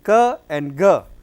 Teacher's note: ka and ga they are velar, because here the back part of the tongue is raised to the corresponding height to the soft palate. So, active articulator is back part of the tongue and soft palate is the passive articulator.